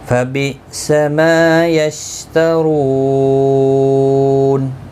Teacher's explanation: مد العارض وقفی ہوگا. 3 سے 5 الف کی مقدار کے برابر کھینچ کر وقف کریں گے